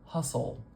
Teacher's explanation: that schah and the L are said so quickly and so close together that we can kind of combine the symbols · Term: syllabic consonant